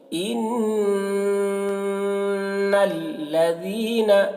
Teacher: نون مشدد غنہ کریں گے، ان آواز کو تھوڑی دیر تک گنگنائیں گے